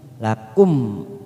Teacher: ada mim sukun bertemu Hamzah namanya Izhar Syafawi kita baca jelas tanpa mendengung